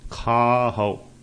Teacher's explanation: ਖੱਖੇ ਦਾ ਕੰਨਾ ਥੋੜਾ ਲਮਕਾ ਕੇ ਬੋਲਣਾ ਹੈ